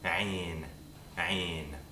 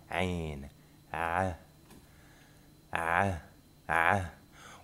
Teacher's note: Ayn is an approximant consonant, which means that there's no stop or a fricative nature to the consonant.